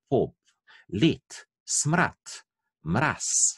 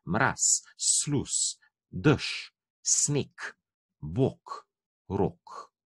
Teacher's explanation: vse te besede druži to, da imajo na koncu zveneči glas, zveneči nezvočnik. Ne? In v izgovoru seveda povemo besedo na tak način, edino možno je povedati na tak način, da namesto tega zadnjega glasu povemo nezveneči glas